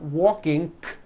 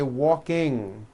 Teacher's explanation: There is not a K sound. The word is not walking, k. It's walking with that NG ending